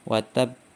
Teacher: ditambah dengan tasydid sehingga perlu ditahan satu harokat terlebih dahulu. Contohnya di surat Al-Lahab ayat 1, tabbat yada abi lahabi wa tab ya, perlu ditahan dulu, wa tab, tidak langsung wa tab, tapi wa tab. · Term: qalqalah kubra